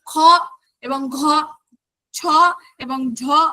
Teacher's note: আমাদের প্রাণবায়ু বা আমাদের শ্বাসবায়ু জোরে জোরে বের হচ্ছে, সেই জন্য এদেরকে বলা হচ্ছে মহাপ্রাণ ধ্বনি